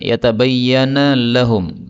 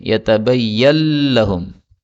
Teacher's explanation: Nah, ini boleh idgham menjadi yatabayyal lahum. Nunnya hilang, maka menjadi idgham, menjadi lam.